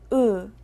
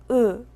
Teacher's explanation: 다음은 으입니다. 으는 입을 자연스럽게 조금만 벌리고 혀가 입안의 중간에서 편안하게 내는 소리예요.